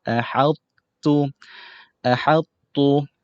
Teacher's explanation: Walaupun huruf ta ni dimasukkan ke dalam huruf ta, tetapi sifat ataupun bunyi huruf ta ni masih dikekalkan sedikit. Kemudian disebut ataupun digelar sebagai naqis.